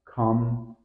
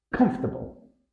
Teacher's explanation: think of it as comfortable where the fort almost disappears